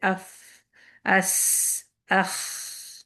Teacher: یہاں پر آپ کو انرجی نہیں چاہیے، یہ صرف ہوا ہے، کیونکہ یہ سرگوشی ہے، پستی ہے، وسپرنگ ہے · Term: ہمس